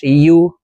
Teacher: ইয়ার উচ্চারণ জিহ্বার মধ্যখান থেকে পড়তে হবে।